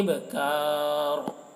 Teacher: را کو پر پڑھیں گے کیونکہ یہاں پر وقف کریں گے تو رائے کی جو زیر ہے وہ سکون سے بدل جائے گا، تو را کو پر پڑھیں گے، ابکار، اس طرح۔